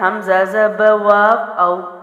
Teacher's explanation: حمزہ زبر واو او، اب ہم نے یہ بھی حروف لین میں سے ہے، پڑھا تھا. واو ساکنہ سے پہلے زبر ہو تو واو لین ہے. جلدی پڑھیں گے، نرمی سے پڑھیں گے.